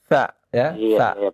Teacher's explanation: Huruf sa itu dari ujung gigi seri dengan ujung lidah